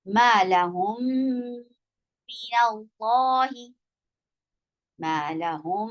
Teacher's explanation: آپ اس میم ساکن کو اگلے میم متحرک کے ساتھ ملا کر پڑھیں گے اور پلس غنہ کر دیں گے. · اس میم کو اس کی میم کے اندر داخل کر دیجئے اور پلس غنہ کیجئے. غنہ کا مطلب ہوتا ہے آواز کو ناک میں ٹھہرانا، اور یہ غنہ جو ہوگا اکمل ہوگا، لمبا مضبوط لانگ غنہ ہوگا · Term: ادغام